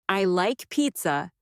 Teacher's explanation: Let your voice fall gently at the end.